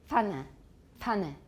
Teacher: Some languages have affricates in which the bilabial stop is released into a labiodental fricative.